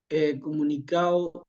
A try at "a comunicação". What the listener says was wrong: Aí você pronuncia A, não E.